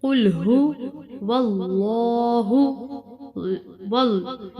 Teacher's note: لام واو کو لام کے ساتھ ملائیں گے اور لام کو موٹا پڑھیں گے